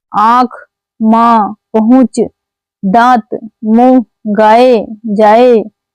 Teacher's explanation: शब्दों का उच्चारण में करने वाला वायु मुख एवं नाक दोनों से बाहर आती है। इसी को अनुनासिक स्वर कहते हैं।